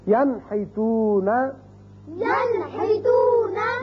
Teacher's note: نون ساکن کے بعد ہا آ گیا تو اس کو ہم ظاہر کر کے پڑھیں گے نون کے مخرج کو. ینحتون، ينحتون یہ تھی مثال ایک کلمے میں نون ساکن کی.